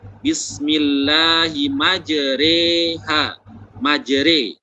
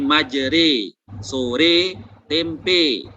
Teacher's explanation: Jadi bacaannya itu antara harokat fathah dengan harokat kasroh. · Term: imalah